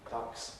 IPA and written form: dʌks (ducks)